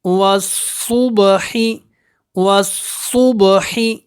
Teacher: اس واو کو آپ نے صاد کے ساتھ ملانا ہے، یہ بیچ میں الف اور لام سائلنٹ ہے۔ واو صاد زبر وس، صاد با پیش صب، والصبح، حاضر ہی، والصبح، والصبح۔